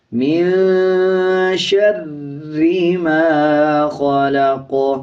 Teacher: آگے دیکھیں میم کے اوپر زبر ہے، جب زبر والے الفاظ کے بعد الف آ رہا ہو تب 1 سیکنڈ لمبا کیا جائے گا۔ قاف پہ جب وقف کریں گے زبر سائلنٹ کریں گے، قاف پہ قلقلہ کیا جائے گا۔